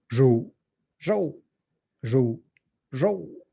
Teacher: These are kind of classic phonation type differences where you've got a bundle of sound features which include different phonation, sort of breathy phonation versus clear, and also differences in things like whether the pitch is falling or not falling.